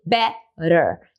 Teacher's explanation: E a sílaba forte não é a sílaba do T, é a sílaba anterior, é o b. Então, por isso eu posso fazer better.